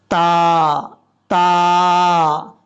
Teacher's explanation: یہ دو نقطوں والا تا یاد رکھیے گا، یہ تا باریک پڑھا جاتا ہے اور اس کا مخرج سب سے پہلے سن لیں۔ زبان کی نوک اوپر والے جو دو دانت ہیں ان کی جڑوں سے لگے گی تو تا پڑھا جائے گا